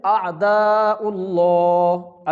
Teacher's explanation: لفظ اللہ کے لام کے پیچھے پیش ہے، حمزہ کے اوپر پیش ہے تو اس لیے اس لفظ اللہ کے لام کو موٹا کریں گے، کیوں کہ پیچھے پیش آ چکی ہے۔ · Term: لام موٹا